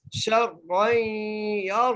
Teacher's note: شین کو را سے سکتے سے ملانا ہے، را کو جب یا سے ملانا ہے تو پھر کیا کرنا ہے؟ غنہ کر کے پڑھنا ہے کیونکہ یہاں پر تنوین ہے